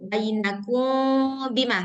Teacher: disamakan aja bacanya seperti membaca iqlab, yaitu suara mimnya yang kedengaran sekaligus ditambah ghunahnya